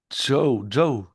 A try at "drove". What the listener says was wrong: Ouais, c'est ça, c'est pas bon. C'est un D, donc... Drove.